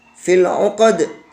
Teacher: ketika mengucapkan uqad di sini ada qalqalah. Harus memantul juga, yaitu huruf dal.